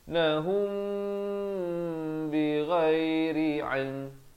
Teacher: Di sini ikhfa syafawi. Mim mati bertemu ba, kena bacakan dengan panjang 2 harakat.